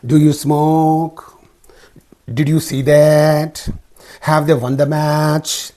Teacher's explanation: See, rising intonation, rising pitch. The tone, the voice at the end of all these yes/no questions will be rising high.